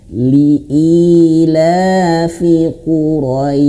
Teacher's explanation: Syin itu di makhrajnya ayah bunda di tengah lidah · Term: huruf syin